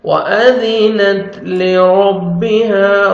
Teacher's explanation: را کو مر فتح ہے. را کو موٹا کر کے پڑھیں گے · وأذنت ذال کو نرمی سے ادا کریں گے اور تا کا لائٹ سے ساؤنڈ آئے گا